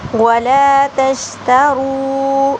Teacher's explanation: را کو پر موٹا کر کے پڑھا جائے گا.